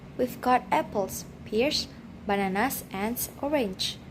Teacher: The second one we have list, rising, rising, rising, and then falling. Intonation falls on the last item to show that the list is finished.